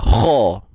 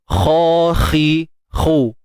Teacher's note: Kha tebal isti'la. Angkat pangkal lidah.